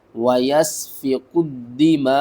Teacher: میم کو 5 الف کے برابر کھینچ کر پڑھیں گے اور ساتھ میں جھٹکا دیں گے حمزہ کے اوپر